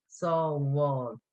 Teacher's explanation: a BH before a broad vowel before an A. That sounds like it makes it kind of a W sound.